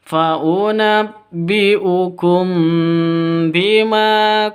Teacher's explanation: Di sini ada mim mati bertemu dengan ba, samar didengungkan karena ikhfa safawi.